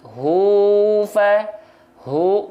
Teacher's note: makhraj Ha besar dari pangkal tenggorokan Hua hu biasa aja kayak ha biasa Hua jangan dari Dada